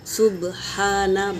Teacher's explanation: सुब्हाना बा सुकून है तो खलखला होगा, हा हवा के साथ निकलेगा और खड़ा ज़बर है तो एक अलिफ के मिकदार खींच के पढ़ेंगे